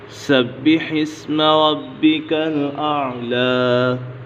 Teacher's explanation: با حرف قلقلہ بھی ہے اور مشدد بھی ہے، اسے جمع کے ساتھ پڑھیں گے